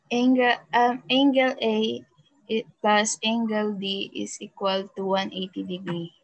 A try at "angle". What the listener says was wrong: Okay, so para hindi kayo nahihirapan mag-pronounce sa, it is pronounced as angle, not angle, okay? It is not an angel, okay? It is an angle, okay?